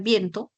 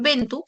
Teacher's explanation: Las vocales E y O breves y tónicas pasaron a ser diptongos en castellano. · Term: diptongación